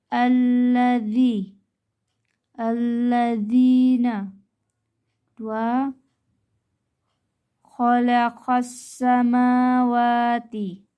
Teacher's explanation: Cara membacanya alif lam samsiyah dibaca lebur atau idgham.